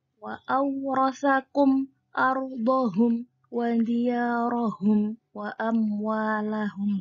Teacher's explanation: Cara membacanya adalah izhar, jelas di antara dua bibir. Jadi tidak boleh terlalu mendengung dan juga tidak boleh samar. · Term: izhar syafawi